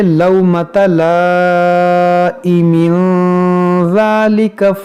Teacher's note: یہ مد متصل ہے، لومۃ لائم، اس دو زیر کو ساکن کریں گے، یہاں پر رکیں گے تو ساکن کریں گے، اور اگر سانس لمبی ہے ملا کر پڑھنا چاہتے ہیں تو پھر یہاں پر تنوین کے بعد ذال ہے تو یہاں پر اخفا کریں گے